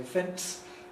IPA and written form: fents (fence)